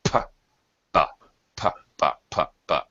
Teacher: P is the same sound unvoiced as B. Same motion, physically, I'm talking about.